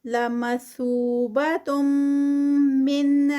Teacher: یہاں پر تنوین ہے اور آگے میم میں جو ہے میم مشدد، تو ادغام ہو رہا ہے اور یہ ادغام ود غنہ ہوگا